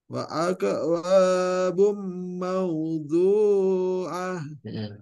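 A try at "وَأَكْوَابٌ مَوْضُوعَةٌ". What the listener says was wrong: Bum ditahan sedikit, ada idgham di gunnah. Bum mawdu'ah.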